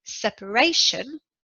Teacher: Separation is a noun. In separation, the stress is on the third syllable, just before the end.